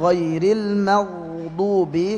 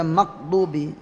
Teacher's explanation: ketika ghain sukun dia mengalir ya, enggak boleh mentok